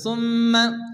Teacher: মাতরাবা মাতরাবা আও মিসকিনান যা মাতরাবা আও মিসকিনান যা মাতরাবা সুম্মা মিমের পরে তাসদীদ মিম গুন্না ওয়াজিব এক আলিফ গুণ করতে হবে।